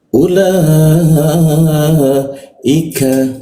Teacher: lidahnya kita turunkan sehingga ee rongga udara terbuka dan ada hembusan udaranya.